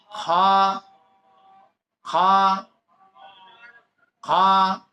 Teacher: গলার ভিতরে একটু খেড় খেড়ানোর মতো একটু খ, এরকম হয় না, এরকম একটু উচ্চারণ হালকা একটু আসবে।